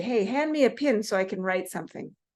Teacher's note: you might hear them pronounce pin and pen the same way.